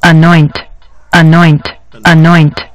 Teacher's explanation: the emphasis is going to be placed on the second syllable